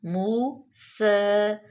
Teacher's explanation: موسیٰ، موسیٰ، واو مدہ، سین پہ فتح اشبائی، اس کو لمبا کریں گے